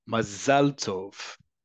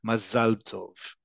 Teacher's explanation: In Hebrew, again, remember, accent is on the last syllable.